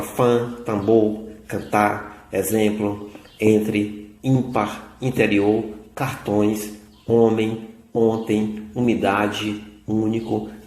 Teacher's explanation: Deixando que o ar percorra também pelo seu nariz, nós produzimos esses fonemas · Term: fonemas nasais